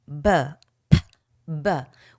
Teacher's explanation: p is a voiceless sound and B is a voiced sound